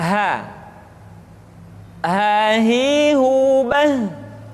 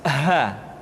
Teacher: huruf H dikeluarkan dari tenggorokan yang terjauh